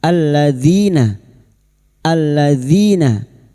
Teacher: Alladzi di sini terdapat lam takrif yang bertemu dalal. Kita baca alladzi idgham syamsiyah. Alladzina alladzina kasrah bertemu ya sukun dua harakat mad thobi'i.